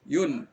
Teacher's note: ujung lidah kita ini berada di langit-langit. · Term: nun